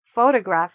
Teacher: Photograph has the stress in the beginning